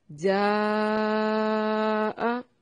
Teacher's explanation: جاء، یہ جو مد ہے یہ مد متصل ہے، مد متصل، حروف مدہ کے بعد حمزہ اسی کلمہ میں ہو اسے مد متصل یا مد واجب کہا جاتا ہے۔ یہاں پر مد کرتے ہیں یعنی اس کو کھینچنا ہے، اس کو ہم 4 سے 5 حرکات کے برابر کھینچیں گے